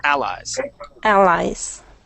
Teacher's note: so we're going to stick the accent at the beginning